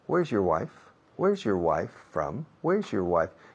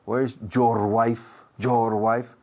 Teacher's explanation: Your es la palabra menos acentuada en toda la frase. Sin embargo, los españoles tenéis la costumbre, la mala costumbre, de acentuar esa palabra.